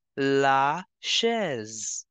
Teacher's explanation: S is between two vowels, so we have to change the sound of S to Z. It is starting with CH, so sh sound will come.